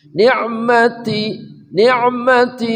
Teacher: Ni'mati tatitu berdesis hams. Ni'mati ujung lidah bersama gusi gigi seri atas.